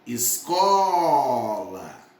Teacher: escola a sílaba tônica é co